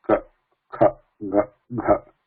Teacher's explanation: So if I close my nostrils, we can still say ka, kha, ga, gha.